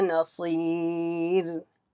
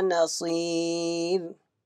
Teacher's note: This ra will be sakin when you stop. And ya sakin came before ra sakin. Ra will be read with empty mouth.